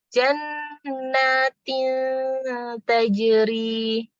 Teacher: dengungannya itu tidak sedalam atau selama idgham bi gunnah, tapi juga tidak jelas seperti izhar, di antara aja dengungnya. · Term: ikhfa